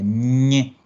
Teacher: Nosotros, la ñ, cuando la pronunciamos, el sonido nos sale por la nariz, porque cerramos con la lengua la salida del aire por la boca.